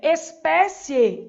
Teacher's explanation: espécie tem acento na penúltima sílaba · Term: paroxítona